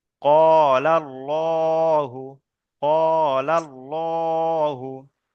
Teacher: এখানে লাম খাড়া জাবার লা উচ্চারণ হয়, কিন্তু এখানে লাম খাড়া জাবার ল কেন উচ্চারণ করলাম, তার কারণ হলো এখানে যে আল্লাহর শব্দ এসছে, আল্লাহর শব্দের পূর্বে যে অক্ষরটি এসছে সেই অক্ষরের উপরে জাবার এসছে, সেই জন্য এখানে পুর করে পড়তে হবে। তাহলে আল্লাহ শব্দটাকে ল করে, ল উচ্চারণ করতে হবে, সেই জন্য এখানে লাম খালা জাবার ল বলে উচ্চারণ করলাম।